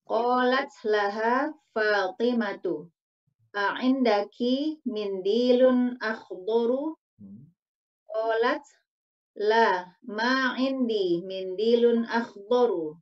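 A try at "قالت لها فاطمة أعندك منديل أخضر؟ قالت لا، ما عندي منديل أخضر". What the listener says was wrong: Jamil.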